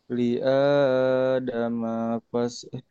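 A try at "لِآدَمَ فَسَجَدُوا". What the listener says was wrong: Mahnya pendek. Ayo hati-hati.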